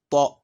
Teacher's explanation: Concernant le ta, le fond de la langue se bombe. C'est ce qui permet de créer cette emphase, cette gravité à la lettre ta